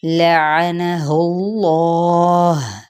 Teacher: لعنہ اللہ، یہاں پہ کیا ہے، ان حرکات کو ہم نے لمبا نہیں کرنا، جبکہ اس میں جلالہ کا جو لام ہے اس کو ہم نے پر کرنا ہے، ٹھیک ہے، کیونکہ پیچھے ضمہ یعنی پیش آ رہا ہے۔